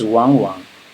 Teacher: When two third tone together, the first one have to change to second tone. It's wang wang.